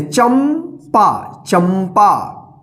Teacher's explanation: ठीक है, क्योंकि यहाँ पे बिंदी का उच्चारण जो है ना आधा म के रूप में हुआ है